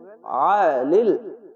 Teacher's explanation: অবশ্যই আইনটিকে মোটা করে গলা চিপে করবেন